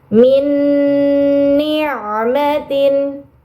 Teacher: Nun sukunnya masukkan ke huruf nun dengan gunah yang dipanjangkan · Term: idgham bi gunnah